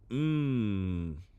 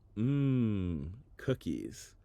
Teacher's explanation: you make the M Sound by humming while your lips are closed